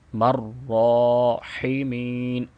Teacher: میم کو را کے ساتھ ملائیں گے اور اس کو 2 سیکنڈ لمبا بھی کریں گے، کھڑی زبر ہے، مرراحمین، ہا کی ادائیگی صحیح کریں گے، اور چونکہ یہاں پہ ہم نے وقف کرنا ہے تو نون کو بھی ساکن پڑھیں گے۔